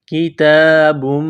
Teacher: تا کے اوپر کڑا زبر ہے، 1 الف کے لمٹ میں کھینچنا ہے، تا کو باریک کرنا ہے۔